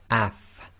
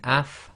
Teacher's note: you'll notice that your top teeth, front teeth, come together with the inner portion of your bottom lips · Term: fa